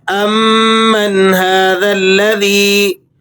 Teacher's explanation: امن هذا الذی، نون پر آپ نے غنہ ادا نہیں کرنا، آگے حروف حلقی آ رہا ہے اور یا کو آپ نے کھینچ لینا ہے، یا مدہ ہے، 1-2 سیکنڈ تک آپ اسے کھینچ کر پڑھیں گے